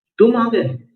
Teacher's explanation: तुम आ गए, तुम पर बलाघात है। मतलब बोलने वाले को अचंभा हो रहा है